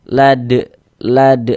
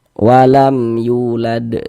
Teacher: Karena kita berwakaf atau berhenti di huruf qalqalah maka dia menjadi qalqalah qalqalah qubro. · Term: qalqalah kubra